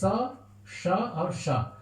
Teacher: दंत स जो दांत से बोला जाता है, तालव्य स जो तालु से बोला जाता है, और एक मूर्धन्य सकार, हाँ, वो मूर्धा से उसको जो उच्चारण किया जाता है। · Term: 3 सकार